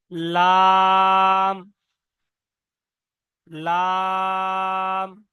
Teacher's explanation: উপরের সামনে দাঁত, দাঁতের গোড়া আর জিহ্বার আগা একসঙ্গে মিলিত হয়ে উচ্চারণ হবে